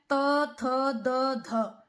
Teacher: फिर है त थ द ध, इन व्यंजनों का जब हम उच्चारण करते हैं तो हमारी जीवा दांतों से स्पर्श करती है, दांतों को छूती है, तो ये दंते हो गए हैं।